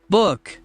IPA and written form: bʊk (book)